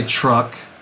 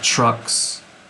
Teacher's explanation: the k in trucks is lighter than the k in the truck